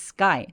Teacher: S 뒤에 오는 크 소리들은 된소리 되기